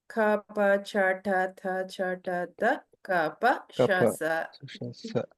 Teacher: we are not using our voice box to say all this. So they are called unvoiced consonants, or we are going to call them hard consonants, or in Sanskrita, karkasha vyanjanani.